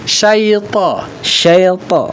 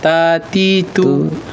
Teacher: Kalau lidah kita tidak diangkat punggung lidah bagian tengahnya itu maka dia akan bunyi ta kecil ta ti tu. Tapi kalau diangkat punggung lidah menjadi tidak perlu dengan bibir membesarkannya.